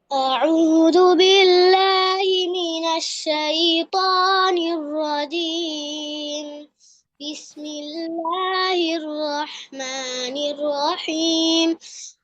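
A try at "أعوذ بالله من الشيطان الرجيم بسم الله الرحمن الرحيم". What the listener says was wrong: আরেকটু র গুলো আরেকটু মোটা করতে হবে।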